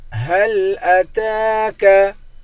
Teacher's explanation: هل أتاك تا پر کھڑا زبر ہے، اس کو ایک الف کے مقدار کھینچ کر پڑھیں گے